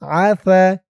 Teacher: থার উচ্চারণটা নরম হবে। জিহ্বার মাথা উপরের দাঁতের মাথার সাথে লাগবে।